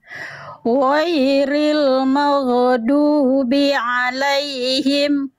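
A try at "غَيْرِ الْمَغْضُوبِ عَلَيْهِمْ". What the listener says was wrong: Izin Bunda, jangan magedu. Huruf ghain huruf qalqalah atau bukan Bunda? Oh, nggak boleh magedu. Tapi ghairil maghdu ngalir suaranya bukan jangan ditambah vokal e. Tapi bunyi konsonan e. Ghairil maghdubi alaihim waladdo.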